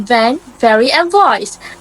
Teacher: To make the V sound, place your teeth on your lower lip again, but this time engage your vocal cords while releasing air